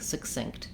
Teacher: this first syllable is very fast and the second syllable is stressed. But this fast first syllable has some sounds you might not expect in it.